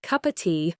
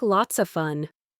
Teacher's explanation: Very often you'll hear it as fish and chips, where the D sound in and simply disappears, or the V sound in of frequently disappears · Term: elision